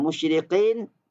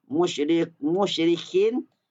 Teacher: Qaf dengan kaf ni tempat keluarnya iaitu pangkal lidah naik ke atas langit. Kalau qaf ke belakang sikit, kalau kaf ke depan sikit. Kurang hati-hati bunyi sama dah.